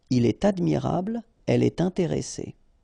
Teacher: So like here, for instance, il est admirable, il est admirable, okay, elle est intéressée, all right, so in all these cases you should make the liaison, and in that case it's with T.